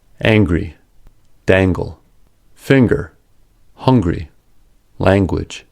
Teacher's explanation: In the following words, a G sound follows the NG sound.